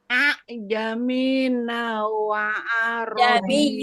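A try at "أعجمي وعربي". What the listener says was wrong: Jamiyu, bukan jamina. Jamiyu, ya itu ya. Ya tasdid. Jamiyu wa arabi.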